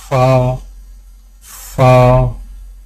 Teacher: فا، فا کی ادائیگی میں سامنے والے اوپر کے دو دانتوں کے سروں کو نچلے ہونٹ کے گلے حصے پر لگا کر باریک آواز میں پڑھیں